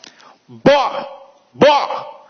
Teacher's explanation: o B, ele começa com interrupção, mas o O não tem.